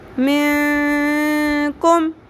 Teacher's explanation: چھپانا ہے ناک کی ہڈی میں ٹھہراتے ہوئے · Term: اخفا مع الغنہ